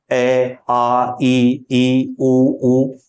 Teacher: ये जब हम बोलते हैं तो हमारी जीभ मुख में किसी अंग को स्पर्श नहीं करती ना हमारे होठ आपस में स्पर्श करते हैं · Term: स्वर